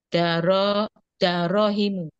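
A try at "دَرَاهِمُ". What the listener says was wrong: itu kurang kurang alif itu. Darahimu kurang alif.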